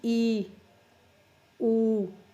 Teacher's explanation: ਜੀਭ ਆਪਣੀ ਉੱਚੀ ਉੱਠਦੀ ਹੈ, ਜੀਭ ਉੱਠ ਕੇ ਤਾਲੂ ਦੇ ਨੇੜੇ ਪਹੁੰਚ ਜਾਂਦੀ ਹੈ, ਬਿਲਕੁਲ ਨੇੜੇ, ਉਹਨੂੰ ਕਹਿੰਦੇ ਉੱਚੇ ਸਵਰ।